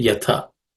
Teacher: The first word yatha as tha, which is aspirated because it's a second consonant in the third class of consonants